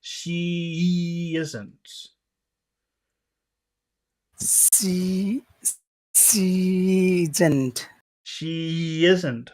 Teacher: she finishes with a vowel sound and isn't starts with a vowel sound. So, you have to produce more vowel sound to to make both of them clear.